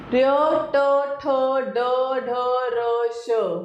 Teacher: र ट, ठ, ड, ढ, र, श, मुर्धा। मुख खुला जीभ लोटकर मुर्धा से लगी हुई